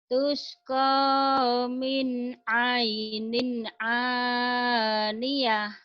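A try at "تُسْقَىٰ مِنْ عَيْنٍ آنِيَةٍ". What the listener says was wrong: tusqa min ainin, ya benar ini ain, tapi yang keduanya jangan ainin ya. Jangan min ainin aniyah, ini aniyah. Ya, ainnya benar sini. Tusqa min ainin, ini aniyah, ini alif hamzah.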